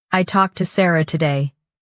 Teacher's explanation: The tone is slower, flatter, heavier. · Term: serious tone